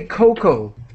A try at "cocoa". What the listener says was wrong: So we do not, in English, we do not pronounce the A. So cocoa.